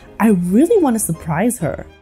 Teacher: Then the O in to takes on a schwa sound, So together, these two words become wanna. The words then flow into each other to sound like, I really want to surprise her.